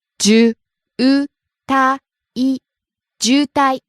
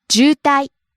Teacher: Starts out low, rises on u, and stays high.